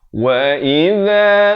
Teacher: di hujung lidah, jangan baca wa iza jadi huruf zai, ya, ini huruf zal